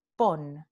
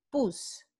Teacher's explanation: En puse, la raíz es pus. Entonces, vemos un cambio en la vocal de O a U y un cambio en la consonante de N a S